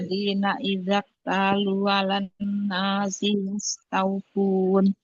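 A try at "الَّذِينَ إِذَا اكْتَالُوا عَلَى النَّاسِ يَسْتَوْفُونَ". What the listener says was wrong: Sinya pendek ya. Sinya pendek, pelan-pelan saja. Alladzi, Alladzina idaktalu, diulang. Alladzina idaktalu, diulang.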